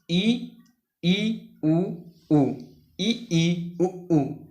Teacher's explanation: इनके उच्चारण में मुख जो होता है वो लगभग बंद रहता है ना, लगभग आपका बंद रहेगा स्वरव्रत स्वर के उच्चारण में।